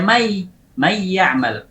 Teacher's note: suara gunnah yabqa zahiran mutawwala, menjadi zahir dan panjang